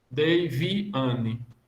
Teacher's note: você vai ter o Ni como grau 0, o An como grau 3, o Vi como grau 2 e o Dei como grau 1.